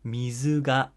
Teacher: 水が starts low, goes high, right? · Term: flat pitch accent